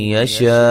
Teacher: यशा शीन पे जो मद है ये मद वाजिब है, वक्फन वस्लन मद करेंगे 3 से 4 अलिफ के बराबर